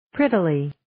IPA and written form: ˈprɪtiːli (Prettily)